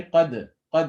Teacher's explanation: you have to make sure there is no fatha sound. It should be qad, qad. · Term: qalqala